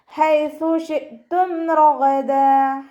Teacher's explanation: ഹ തൊണ്ടയുടെ മധ്യഭാഗമാണ് മഖ്റജ്, സൗണ്ടിനെ ക്ലിയർ ആക്കി കൊടുക്കുക കേട്ടോ.